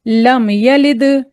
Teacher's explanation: दाल पे कलकला देना है क्योंकि दाल आखिर में है और साकिन हालत में है तो कलकला देंगे · اب دال پہ قلقلہ دینا ہے کیونکہ دال آخر میں ہے اور ساکن حالت میں ہے